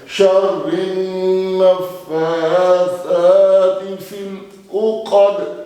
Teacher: दाल पे रुके तो ये साकुन हुआ, तो फिर क्या हुआ? कलकला हुआ।